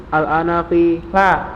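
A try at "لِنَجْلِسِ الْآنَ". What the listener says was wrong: Linajlisil ana. Alnya jangan diulang.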